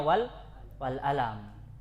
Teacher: dirubah menjadi hamzah. Itu qafnya orang Mesir